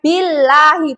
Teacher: lafadz Allah kalau didahului harokat kasroh itu tidak lagi tebal